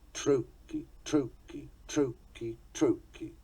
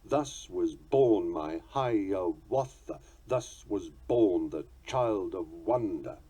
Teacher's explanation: As a falling rhythm, a tick-tock, tick-tock, tick-tock, it finishes on an unaccented syllable